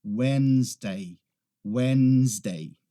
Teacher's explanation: A gente não pronuncia aquele D no início.